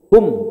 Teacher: Jadi hum itu dari tenggorokan bawah langsung ke bibir. Hum, jangan ada interval waw.